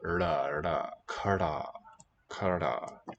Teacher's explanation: quite closed D consonant with the tongue tip curled